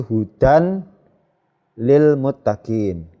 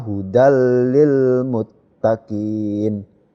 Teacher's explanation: Kalau tidak masuk berarti hudan lil muttaqin. Karena ini fathah tanwin ya, bertemu dengan lam, ini masuk ya, masuk ke huruf lam. Jadi bacanya hudal lil muttaqin ya.